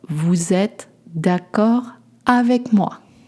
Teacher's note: Make sure to high pitch the last word.